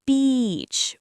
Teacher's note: The word beach, it's not okay? It's beach with a long e sound. Your lips stretch wide like you're smiling.